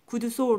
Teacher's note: 솔은 긴 소리인데 구두솔 하니까 짧은 소리로 발음이 돼요